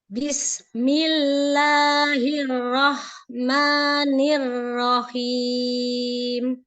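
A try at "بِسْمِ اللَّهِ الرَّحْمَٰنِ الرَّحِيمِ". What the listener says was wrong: Sinnya aja tinggal dialirkan lagi biar nggak kayak memantul jadi bismi, bismi.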